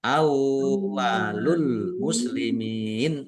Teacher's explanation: awwalu wawunya dibaca double ya. Dibaca wawu sukun dulu. Awwalul muslimin.